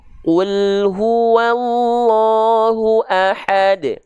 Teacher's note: Qaf nggak boleh keluar nafas. Ku. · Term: jahar